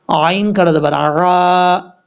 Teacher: اچھا یہاں پر لوگ غلطی کرتے ہیں، عین کو بھی حمزہ پڑھ جاتے ہیں، عین کو حمزہ نہیں پڑھنا، عین کو کلیئر کر کے پڑھنا ہے